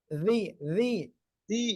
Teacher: জিব্বার আগার সামনের উপরের দুই দাঁতের আগে লাগান